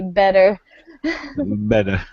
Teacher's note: in American English, we pronounce it with like a D